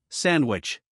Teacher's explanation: many Native English speakers drop the D sound when it comes between two other consonant sounds because pronouncing D in this position can be a bit difficult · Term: drop D sound